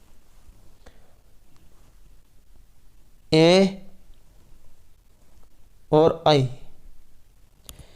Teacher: ए दई तो कंठ तालु, ए और आई, इनका जो उच्चारण स्थान है ये कंठ और तालु से होता है।